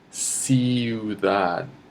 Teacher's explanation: the last D sounds silent. It's because it's there, but it's ending between your teeth. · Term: soft D